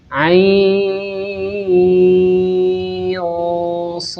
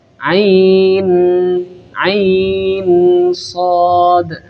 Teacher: Sehingga di sini ada bacaan nun sukun ketemu shad yang hukumnya adalah ikhfa hakiki. Jadi nun sukunnya harus kita samarkan. Ain sh. Jangan sampai kita membaca nun sukun dengan bacaan yang jelas.